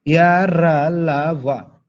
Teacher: श्वास अवरोध बहुत कम होता है। जब अंतस्थ व्यंजन को बोलते हैं तो श्वास जो निकलेगा उसमें अवरोध बहुत कम उत्पन्न होगा।